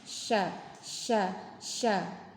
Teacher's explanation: Nah, kalau syin itu ter eh mengalir nafas, juga mengalir suara. Sehingga nafas dan suaranya itu keluar melalui celah-celah gigi. Ya, silakan dirasakan ada rasa menyebar gitu ya nafasnya. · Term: tafashi